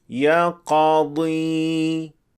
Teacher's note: تلفظ کرتے وقت جبڑے ایک دوسرے سے الگ نہیں ہوئے، لیکن غلط ورژن میں ہم دیکھتے ہیں کہ جبڑے تھوڑے کھل جاتے ہیں، جس کی وجہ سے قاف میں زبر کا ہلکا سا اثر آ جاتا ہے